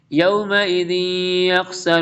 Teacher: وَلِلَّهِ مُلْكُ السَّمَاوَاتِ وَالْأَرْضِ وَيَوْمَ تَقُومُ السَّاعَةُ يَوْمَئِذٍ يَخْسَرُ، تنوین کے بعد یار ادغام یرملون ہوگا، ذال کو یا کے ساتھ جوائن کر دیں گے